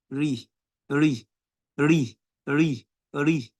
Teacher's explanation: when raw has kasra on it, it is pronounced by doing tarqiq.